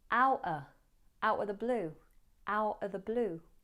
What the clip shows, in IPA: ˈaʊʔə ðə bluː